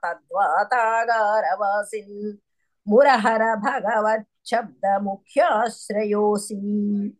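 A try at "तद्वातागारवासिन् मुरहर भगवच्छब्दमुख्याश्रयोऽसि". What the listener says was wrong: చాలా బాగుంది.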